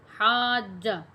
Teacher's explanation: اس حاجہ کے اندر الف کی آواز جو ہے وہ بالکل نہیں آنی چاہیے ، ہا کو الف کے ساتھ ملا کے جیم کے ساتھ